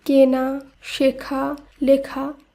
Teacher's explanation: রয়েছে কিন শেখা শব্দের ধাতু শিখ লেখা শব্দের ধাতু লিখ এবং এগুলির সঙ্গে যখন আ প্রত্যয় যোগ হচ্ছে তখন শব্দগুলির আদি এ ধ্বনি সংবৃত উচ্চারিত হচ্ছে